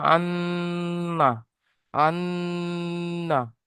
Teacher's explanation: যেমন এই নুন, নুন তাসদিদ, আর এরপরে হামজা, আন, আন্না। তো নুনের উপরে যখন তাসদিদ আসবে তখন নুনটাকে গুণনা করে পড়তে হয়